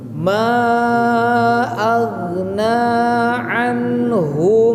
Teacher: Berarti hu di situ hanya 1 harokat pendek. Maka baca yang 1 harokat itu harus dilangsungkan kepada huruf setelahnya.